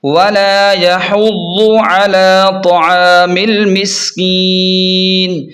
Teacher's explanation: وقف کرنے سے نون ساکن ہو جائے گا